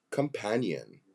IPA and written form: kəmˈpænjən (Companion)